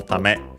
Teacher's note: it's technically a noun, accented on the last syllable